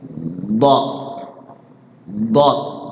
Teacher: huruf do sama huruf Dod beda ya kalau Dod itu adalah Dod dia ujung lidahnya di langit-langit tengah kemudian cara bacanya adalah sisi-sisi lidah kita di dikumpulkan